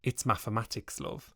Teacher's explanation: the pronunciation of the TH sound as an F, see mathematics